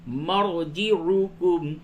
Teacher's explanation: را ساکن سے قبل زبر ہے، اس را کو پر کریں گے